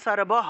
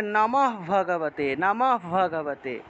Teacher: আর যদি লাইনের একদম শেষে থাকে তাহলে সর্বহ, হটাকে পূর্ণ উচ্চারণ করতে হবে। যদি বাক্যের শেষে থাকে বিসর্গ তাহলে পূর্ণরূপে হ উচ্চারণ করব, আর যদি বাক্য বা শব্দের মাঝখানে থাকে তাহলে অর্ধ হ